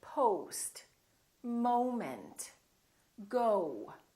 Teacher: We don't say no, we say no. So it's actually two sounds, it's O and U together. So you have to move your mouth from O to U